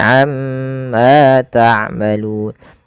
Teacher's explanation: Karena pada lafal tersebut ada yang dinamakan dengan bacaan gunah. itu cara membacanya mnya ditahan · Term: bacaan gunnah